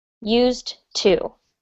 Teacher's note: make sure that you say used with a D sound on the end, and then to. Used to. Okay, and you can run it together and say used to.